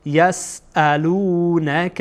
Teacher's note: همزه باز هم از انتهای حلقه ادا میشه